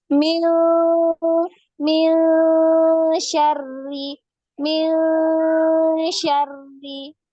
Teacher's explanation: kalau nun sukun atau tanwin nanti ya an in un ketemu huruf shin ini bunyinya seperti ng tapi samar ya, bukan ming tapi mil mil ya.